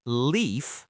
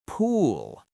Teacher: It sounds deep in the throat. Compare leaf, light L, front of mouth, with pool, dark L, back of mouth. A lot of learners use the light L at the end, and it sounds very thin, poola.